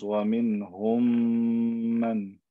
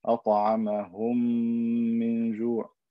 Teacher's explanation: I put them together, then I elongate the M sound with ghunna. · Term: idgham saghir